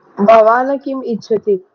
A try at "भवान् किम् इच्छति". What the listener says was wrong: हाँ, भगवान किम इच्छति। भगवान न, न पूरा नहीं है, न आधा है उसका। भगवान, भवान, ऐसा नहीं बोलना है।